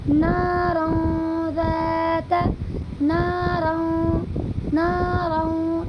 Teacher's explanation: دو زبر کی تنوین کی آواز کو ناک میں چھپا کر پڑھیں گے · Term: اخفا